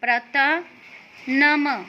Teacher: उसके बाद प्र, इसे कहते हैं प्र को आ की मात्रा प्रा, त को के बाद विसर्ग प्रातः, न म और विसर्ग नम। तो जो विसर्ग की आवाज़ होती है वो ह की तरह आती है